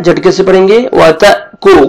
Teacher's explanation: ता को आपने बारीक पढ़ना है, झटके से पढ़ेंगे।